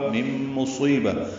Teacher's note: نون ساکن کے بعد میم آنے کی وجہ سے ادغام ہوا ہے، غنہ ہوگا